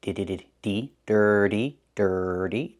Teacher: The T makes a fast D in the middle.